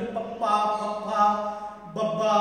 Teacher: ਫੱਫਾ ਜਿਹੜਾ ਅੱਖਰ ਆ ਇਹ ਦੋ ਹੋਂਠੀ ਵਿਅੰਜਨ ਆ